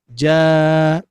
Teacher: Nah, ketika diwakofkan itu tidak menjadi jan, tapi hukumnya diiwadkan atau diganti menjadi mad. Maka yang asalnya jan, nun sukunnya diganti menjadi mad. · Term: mad iwad